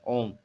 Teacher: ओ दो मात्रा से अधिक के उच्चारण का समय इसमें लगता है। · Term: प्लुत स्वर